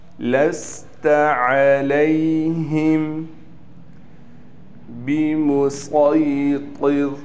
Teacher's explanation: یہاں پر سین نہیں پڑھیں گے بلکہ صاد پڑھیں گے